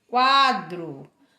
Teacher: porque o U ele é mais fraco do que o A. O U é semivogal e o A é vogal. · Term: ditongo crescente